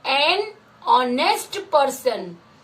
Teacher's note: Here the sound of H is silent.